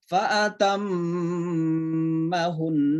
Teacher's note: Jadi itu kalau berhenti ya. Jadi tak nunnya kayak mati, tapi karena ada tasydid tetap didengun-dengunkan. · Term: nun tasydid